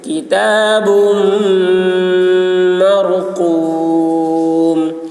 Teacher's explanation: میم مشدد غنہ ہوگا میم میں, را پر ہوگی, قاف کی آواز موٹی ہوگی